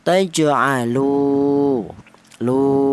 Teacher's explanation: Dia didahului huruf yang berharakat dah. Panjangnya yaitu satu alif atau dua harakat atau dua ketukan. Taj'alu lu kalau satu harakat pendek lu kalau dua harakat panjang dua kali lipat lu. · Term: mad thabi'i